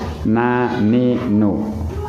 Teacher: Ujung lidah menempel pada langit-langit atas persis di belakang gigi. Gusi atas di belakangnya ya. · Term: nun